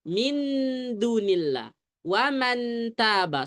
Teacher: nun ketemu ta dengan nun ketemu da langsung nempel lidahnya